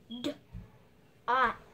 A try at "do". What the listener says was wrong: You said T. I never said T. You just pronounced T. Remember I told you to listen and pronounce. I didn't say D-O-T. I said D-O. Duh, duh. D. O. D. O. is do.